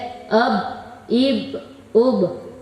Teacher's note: با کا مخرج دونوں ہونٹوں کو ملانے سے ادا ہوتا ہے